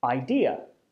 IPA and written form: ˈaɪðә (idea)